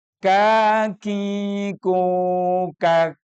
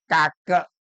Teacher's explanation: kak kak itu ada desisan kecil yang kita dengar aja, tapi nggak usah terlalu keras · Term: kaf